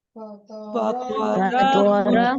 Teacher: طا اور را دونوں کو پر کر کے پڑھیے، یہ ہیوی ہوں گے کیونکہ طا ان اٹ سیلف ایک ہیوی لیٹر ہے اور را کے اوپر جب زبر آ جائے تو اس کو ہیوی کر کے پڑھتے ہیں۔